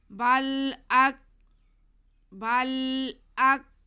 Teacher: آگے حمزہ پہ زبر اور کاف ساکن، باریک کاف ہے، حمزہ کو ہم کاف سے ملا لیں گے